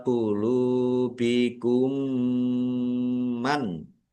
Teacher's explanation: Mendengung. Mim ditandai mimnya ada tasdidnya ditahan biar tampak mendengungnya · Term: idgham mimi